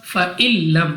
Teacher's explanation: نون ساکن کے بعد لام ہے تو غنہ نہیں ہوگا کیونکہ ادغام کے قاعدے میں را اور لام میں غنہ نہیں ہوتا اس لیے یہاں پہ غنہ نہیں کریں گے.